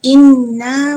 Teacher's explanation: Nun bertasydid dibaca dengung dengan panjang dua harakat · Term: wajibul ghunnah